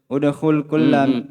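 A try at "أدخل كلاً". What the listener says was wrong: Apa ini? Ada hamzah. Berarti? Adkhil. Kalau udkhul, hamzah wasal. Udkhul, masuklah. Siapa antum suruh masuk?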